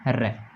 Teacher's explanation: प्रकंपित एक ही अपना ऐसा वर्ण है जिसमें जीभ में कंपन होता है और जीभ लुढ़कती है, और वो है अपने र।